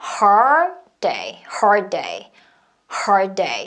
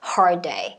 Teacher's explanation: hard 하고 혀가 이미 입천장에 있죠. hard day 같이 터지면 돼요.